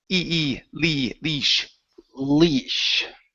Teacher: Okay, this is a long E sound instead of lesh.